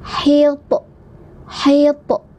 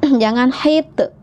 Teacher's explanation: Nah, ini pantulkan ya to-nya ya. To sukun pantulkan, bunyinya pantulannya itu ke o ya ujungnya ya.